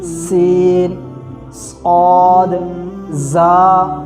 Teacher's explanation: جب یہ ادا ہوتے ہیں تو سیٹی والی آواز نکلے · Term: حروف صفیریہ